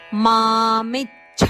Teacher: ಮಾಮಿಚ್ಛ ಮೀ ಮೇಲೆ ಆಘಾತ ಇದೆ ಅಲ್ಪಪ್ರಾಣಚಕ್ಕೆ ಮಹಾಪ್ರಾಣಛ ದ ಒತ್ತು